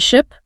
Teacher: the vowel and your tongue position okay for the short eye your tongue is higher in your mouth and the sound is shorter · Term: short ey sound